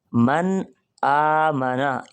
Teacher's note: یہ نون ساکن یہاں خوب واضح ہو کے پڑھا جائے گا۔ من آ منا، یہاں غنہ نہیں ہوگا۔